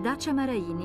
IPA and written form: ˈdaːtʃa maraˈiːni (Dacia Maraini)